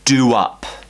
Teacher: Once again, we're finishing with a round vowel shape, ooh. When we have the round vowel shape, we create a w